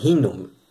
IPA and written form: hi|num ((h)inum)